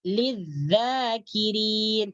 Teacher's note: maka alif lam dimasukkan ke dalam huruf zal. Ini disebut dengan idgham syamsiyah.